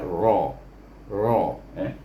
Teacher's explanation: ra baris di atas, baca dengan tebal